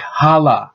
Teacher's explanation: So the N disappears to make it sound like hala. This is actually a form of assimilation.